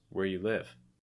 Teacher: the you is reduced and the where is stressed a little bit, but live is your heaviest stress.